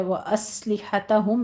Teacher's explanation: سین پر حمز کریں گے سیٹی کی آواز کے ساتھ